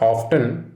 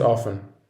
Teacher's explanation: there is a silent t in this word